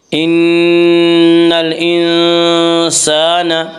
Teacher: ان نون مشدد غنہ ہوگا، غنہ کی مقدار 1 الف ہے۔